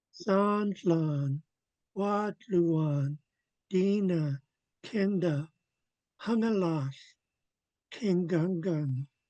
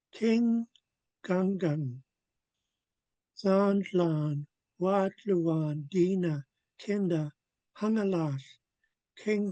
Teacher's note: So Zlan Wluan Dina Kenda Hungalash King Gang. It's almost all high tone except for the two gang gangs at the end.